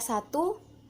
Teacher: Pada kata satu, bunyi S mati, oral, apikoalveolar, dan frikatif